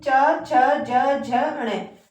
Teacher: च वर्ग में आने वाले जो व्यंजन होते हैं इनका जो उच्चारण स्थान होता है वो जो है तालव्य होता है।